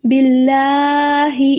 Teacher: اتنا لمبا نہیں کرنا، ٹھیک ہے نا؟ کیونکہ اوپر مد نہیں ہے، صرف کھڑی زبر ہے. کیونکہ کچھ لوگ کرتے ہیں لمبا، زیادہ لمبا نہیں کرنا اور زیادہ جلدی بھی نہیں پڑھنا، ٹھہر ٹھہر کر پڑھنا ہے.